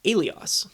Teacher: Aeolic Greek would only use a smooth breathing mark and it'd sound like Alios, and the word would start with a vowel sound alone